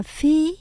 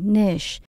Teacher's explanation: Chúng ta nhớ mình nhấn âm đầu tiên. Mình đọc là phi, mình lên cao nhé.